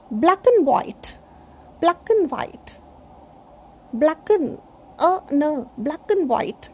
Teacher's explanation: I shouldn't put stress on and. In fluent English, I should say black and white, black and white, black and white.